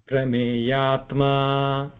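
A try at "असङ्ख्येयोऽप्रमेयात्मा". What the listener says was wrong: this is a avagraha, so there is no separation there. If you are going to separate, there is an addition of a.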